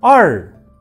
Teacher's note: тілдің ұшы аздап артқа шегінеді, артқа тұрады. Тура солай таңдайға тимейсіздер, бірақ тілдің ұшы дірілдемейді. Бұл р деп оқылады.